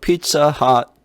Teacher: 허하고 하, 어하고 아의 중간 정도 소리 나는 것 같아요. pizza hut. 근데 그렇다고 해서 뜨거운 피자 핫 이렇게는 안 해요.